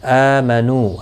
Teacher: حمزہ کے اوپر کھڑی زبر ہے، ایک الف کی مقدار کے برابر کھینچ کر پڑھیں گے